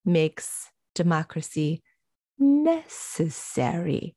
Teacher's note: it's a four-syllable word with stress on the first syllable at the end of a sentence going down and closing out a sentence